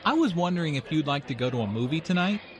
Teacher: notice how the question goes up at the end which shows that he is not overly confident